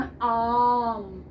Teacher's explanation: म पर जाने से पहले दुगना समय आ पर लगा, फिर हम मा पर आए, है ना। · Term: दीर्घ